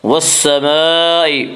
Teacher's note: مد متصل میں حفص کی روایت میں صرف توسط ہے، توسط کی مقدار 2 الف، 2.5 الف اور 4 الف ہے۔